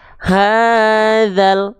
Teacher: lamnya yaitu sukun di sini oke sehingga ketika kita baca hadzal enggak perlu dzanya dipanjang-panjangkan lagi karena Mad thobiinya gagal aktif